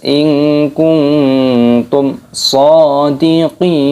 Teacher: Dan nun sukun bertemu dengan huruf kaf, nun mati bertemu dengan huruf ta, ini dibaca berdengung ikhfa sama samar. Kuntum mim sukun bertemu dengan huruf shad idhar syafawi, dibaca jelas